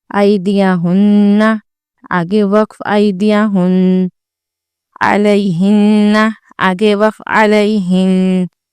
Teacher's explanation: नून मुशद्दद के वक्फ में खुन्ना बाकी बचता है, जैसे आइदिया हुन्ना, आगे वक्फ आइदिया हुन।